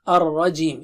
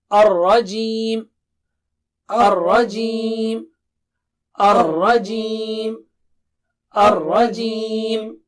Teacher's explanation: را کی جو ہے نا وہ جو تکرار ہے وہ سامنے آنی چاہیے